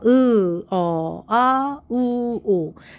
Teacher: 약간 앞쪽으로가 있는데 그에 비해서 후설모음은 혀가 뒤로가 있다는 뜻이에요 그래서 혀가 뒤쪽이라는게 목구멍이 더 가깝다는 뜻이겠죠 목구멍이 가깝게 발음이 돼요